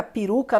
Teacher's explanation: Então, você tem o E seguido de U. O E, ele fica mais abaixo do que o U.